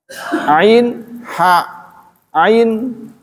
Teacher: Wasatul halqi, was tengah, area makhraj ain, kemudian juga huruf ha.